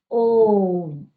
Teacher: ओम शब्द का उच्चारण करते वक्त हमको क्या लगता है? तिगुना समय लगता है। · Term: प्लुप्त स्वर